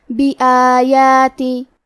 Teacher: کلمت بھی آیات میں الف پہ کھڑا زبر ہے اور یا پہ بھی کھڑا زبر ہے. یہ دونوں مد الف ہے تو ہم یہ دونوں مد کو برابر سا ادا کریں گے